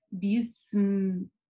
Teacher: Да, то есть не следует говорить бисм или бисм или еще как-то, да, то есть син и мим. Мим, возможно, в этом случае чуть-чуть короче будет, чем син, но, тем не менее, она никак не такая резкая, взрывная